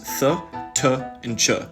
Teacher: saying the English sounds th T and CH you'll notice that your tongue starts all the way up on your teeth and moves farther and farther back in your mouth as you go from th to Cha · your tongue starts all the way up on your teeth and moves farther and farther back in your mouth as you go from th to ch. These different places you put your tongue are called places of articulation, and they can kind of change the acoustics of the sound of your tongue touching the top of your mouth.